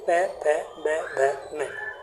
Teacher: प वर्ग जो है वो आपका ओष्ठ से बोला जाता है, होठों से।